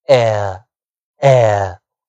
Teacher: 比较啊没有开得非常大，也没有开得非常小啊，中开的一个嘴型啊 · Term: 双元音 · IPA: eə